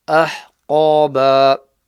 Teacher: Ha from the middle of the throat, qaf full mouth.